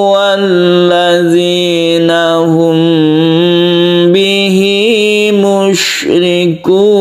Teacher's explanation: Nah, ini kita ketemu lagi dengan mem bertemu dengan ba ikhfa syafawi. Ini ketika kita membaca ini kita dengungkan ya, kita panjangkan.